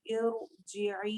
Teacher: लेकिन अगर हम रुक रहे हैं तब भी हम इरजिई, इर रॉ को हैवी ही पढ़ेंगे